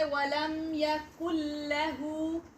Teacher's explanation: Because we read the rule, if after noon, spoon or tanween appear lam or ra, these two letters, okay, lam and ra, any letter from lam and ra, then we are merging the sound of noon with lam and with ra. Okay? For example, you say walam yakul lahu, and now here noon doesn't pronounce. · We are skipping noon here and joining kaf directly with the lam. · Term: idgham without gunna